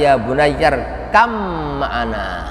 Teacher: Idgham masuk, jadi ba-nya hilang itu. Bukan ya bunayyar kab ma'ana, bukan, tapi ya bunayyar kam ma'ana, hilang ba-nya. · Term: idgham mutajanisain